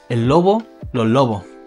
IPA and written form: el lobo (El Lobo)